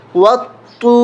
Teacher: واو طا زبر وطا، واو پیش تو، وطو سختی کے ساتھ پڑھیں گے، طا کے اوپر تشدید ہے، وطو اس الف کو، اس لام کو نہیں پڑھیں گے، واو کو طا سے ملائیں گے